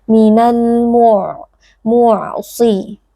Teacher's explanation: ada huruf ain juga bersifat bainiyah, maka harus ada sedikit aliran suara, tidak boleh diputuskan mu'siroti, tapi harus ada aliran suaranya sedikit.